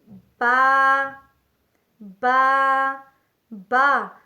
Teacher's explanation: بند ہونٹوں کے گیلے حصے سے ادا ہوتا ہے، با۔